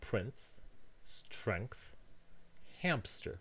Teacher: these words can also be pronounced as [pʰɹɪnts] [stɹɛŋkθ], [hæmpstəɹ] with an extra stop in them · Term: insertion